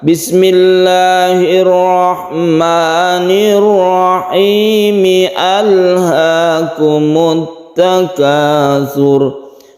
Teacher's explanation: Alha ini memang asli al, jadi al ini tidak terpengaruh baik waqaf ataupun wasal, ini tetap dibaca. Contoh kalau kita mewasalkan dari kata-kata bismillah, bismillahirrahmanirrahim, alhaakumut takatsur, hanya tidak boleh dihilangkan. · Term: hamzah asli